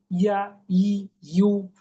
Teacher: ইয়া জবর ইয়া, ইয়া জবর আ নয়, ইয়া জবর ইয়া। ইয়াজের ই, প্লেন ই নয়, জিহ্বাটা তালুর সঙ্গে চেপে।